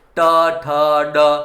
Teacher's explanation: જ્યારે ટ બોલશો એટલે જીભ પાછી પાછળ જતી રહેશે